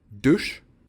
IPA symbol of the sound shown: ʂ